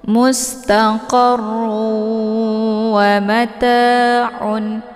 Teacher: Wa-nya dibaca pendek, ma juga dibaca pendek, ta dibaca panjang, ada alif sebelumnya harokat fathah. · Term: mad tabi'i